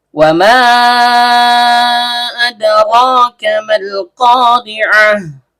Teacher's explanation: Waw dan mim huruf bibir. Karena mimnya berharokat fathah diikuti alif layyinah, maka seharusnya terjadi mad tabi'i. · Tapi karena dia bertemu dengan hamzah koto atau hamzah berbentuk alif yang keluar dari tenggorokan bawah di lain kalimat, maka yang terjadi di sini adalah mad jaiz munfasil. Panjangnya boleh 2 dan juga boleh 4 harokat. Tapi khusus di Indonesia yang memakai jalur asy-syatibi, kita memakai 4 harokat.